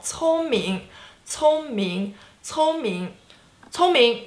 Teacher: So 聪明, first tone, second tone.